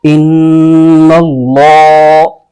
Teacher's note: نون مشدد میں غنہ بھی ہوتا ہے تو غنہ بھی کریں گے اور اس کو حمزہ کے ساتھ ملائیں گے۔